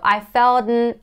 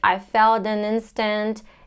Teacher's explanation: I don't release the T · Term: stop T